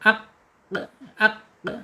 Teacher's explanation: pangkal lidahnya terangkat menyentuh langit-langit yang mempunyai anak lidah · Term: qaf